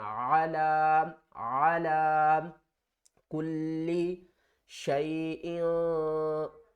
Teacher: عین کو ہم نے حل کے درمیان والے حصے سے ادا کرنا